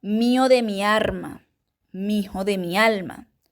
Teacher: hay una alternancia de la r y la l